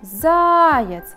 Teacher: Ударение падает на первый слог.